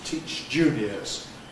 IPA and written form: ˌtiːʧ ˈʤuːniəz (teach juniors)